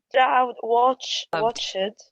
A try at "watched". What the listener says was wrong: شوفي فيها تي في الأخير. watched. فهذه طبعا من زي ما نقولوا من التريكوات متاع الإنجليزي لغة نطق مش لغة كتابة نهائيا.